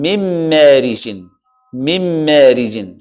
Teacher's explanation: when I do the إدغام I'm going to cancel the نون replace it by the ميم so it's gonna become من مارج من مارج صح now when I add the غنة it becomes من مارج من مارج so that's the غنة So, idgham without ghunna, min marij.